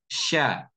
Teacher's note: mengucapkan huruf Sya dengan memajukan bibir sya sya seperti itu padahal huruf Sya tempat keluarnya adalah di tengah tengah lidah